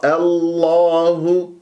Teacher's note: عندما تنطق اسم الجلاله الله مفخمه والهاء مرققه